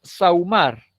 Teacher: la palabra sahumar en la cual la a es vocal abierta y la u siempre es vocal cerrada y tengo un diptongo descendente